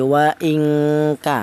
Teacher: Jadi ifa adna itu ifa yang rendah yaitu ee dengungnya lebih dominan daripada samarnya. Jadi ada samarnya sedikit yang lebih dominan adalah tingkat dengungnya. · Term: ikhfa adna